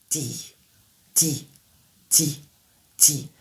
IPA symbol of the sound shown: d